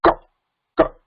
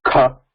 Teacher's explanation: Ka, ka, less energy. Kha, more energy. Mahaprana.